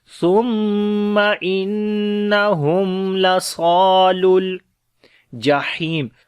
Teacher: Similarly on the noon, after the meme sakin, the next is lam, we make izhar shafawi, the clear sound of meme. And laswa, sad we read in heavy sound, and also we long, this is alif madda here.